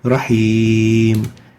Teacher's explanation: We realize here that Rahimun has a tanween on it, but upon stopping on it, it gets a presented sukoon and will be pronounced Rahim. That is a presented sukoon mad.